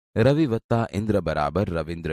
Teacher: હસ્વઈ છે તથા ઇન્દ્ર શબ્દનો પહેલો અક્ષર ઈ પણ હસ્વઈ છે તે બંને હસ્વઈ ભેગા થતા દીર્ઘ ઈ બને છે